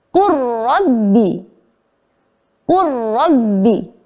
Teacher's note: Lamnya tidak tampak, ya, karena udah dileburkan ke huruf ro. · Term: idgham mutaqaribain